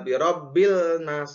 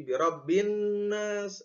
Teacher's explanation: lafaz pertama dimasukkan dengan lafaz kedua itu nun. Jadi lamnya itu tidak jelas teman-teman. Enggak birabbil nas, enggak, tapi birabbin nas. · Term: idgham